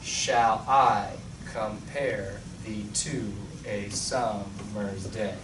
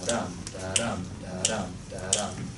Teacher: And we have an iambic pentameter rhythm.